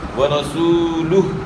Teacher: یہاں راہ کے اوپر زبر ہے، راہ کو موٹا ادا کرنا ہے، اور اس کے بعد واو مدہ ہے، واو ساکن سے پہلے